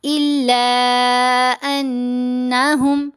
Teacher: لام کو 3 سے 4 حرکات کی مقدار ہم لمبا کریں گے